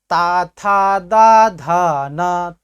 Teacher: तो देखिए आपकी जिह्वा दांत से सट रही